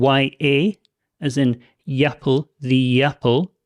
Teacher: when we use that connecting sound, that the into the vowel sound, we have almost like a Y sound. If you imagine like a Y sound, the apple.